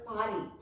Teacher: The last S won't be pronounced and is pronounced as Paris.